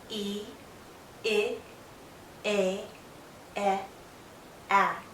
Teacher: my mouth opens more more and more my jaw lowers but my lips are still spread out my tongue is generally still pushed forward with the tip going down to the back of my bottom front teeth · as I go from E to A, my mouth opens more and more. My jaw lowers, but my lips are still spread out. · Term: front vowels